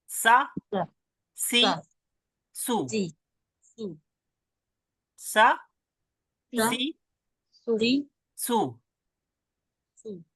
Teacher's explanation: सीन का sound जो है सा, ऐसे सीटी जैसी आवाज आती है ना